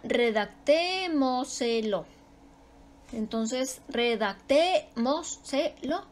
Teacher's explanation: Su sílaba tónica va antes de la antepenúltima sílaba. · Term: sobre esdrújulas